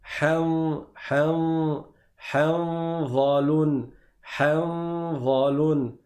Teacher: C'est-à-dire que la lettre Noun, on ne va pas la prononcer complètement. Et on va faire une runna, donc un son qui va sortir de l'extrémité du nez, tout en préparant le dha. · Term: ikhfa